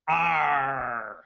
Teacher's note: we prefer ARRRGH with a Cornish, rolling, guttural sound.